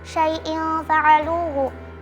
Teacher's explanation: karena ada kasrah tanwin bertemu dengan huruf fa, dibaca mendengung atau samar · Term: ikhfa haqiqi